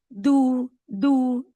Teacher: दाल की आवाज में जबान का आगे का हिस्सा इनवॉल्व होता है। जैसे कि दू द टिप इज इनवॉल्वड।